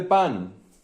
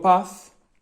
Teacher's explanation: Si yo en vez de pan digo paz, solo he cambiado el fonema de la n por el fonema de la z